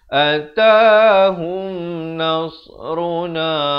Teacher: Atahum, izhar syafawi, bunyi saja hum, jangan panjang, terus masuk